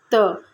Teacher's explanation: त जो है वो दंत से होता है